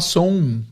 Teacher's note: A gente fala som com um ditongão no final. E acho que em Minas o pessoal fala mais som, né?